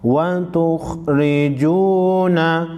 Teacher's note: वाव मद्दा को एक अलिफ के मिकदार खींचेंगे।